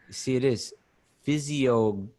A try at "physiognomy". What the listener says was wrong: I think the G is silent. Physiognomy.